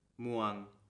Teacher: And the last vowel makes the long vowel sound ua.